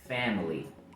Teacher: Pero en este caso el sonido va a ser corto, bastante parecido a la i del español.